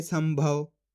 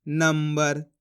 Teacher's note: सा के ऊपर अनुस्वार की मात्रा है, इसके बाद वाला अक्षर भा, ये रहा भा, तो आधा माँ पढ़ देंगे